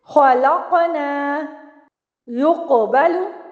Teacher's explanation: सिर्फ कौफ को आपने पुर रखना है और उसको ज़ुबान की जड़ से अदा करना है